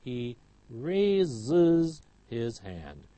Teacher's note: Raise ends in a sibilant, so we have is